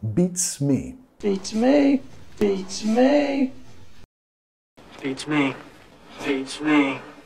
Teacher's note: tenemos que pegar la T y la S